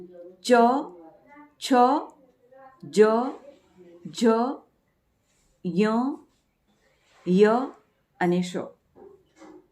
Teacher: જીભ જ્યારે કંઠના જે કઠણ તાળવું છે એને અડે છે ત્યારે જે વ્યંજનોનું ઉચ્ચારણ થાય છે એ વ્યંજનોને આપણે તાલવ્ય વ્યંજનો કહીશું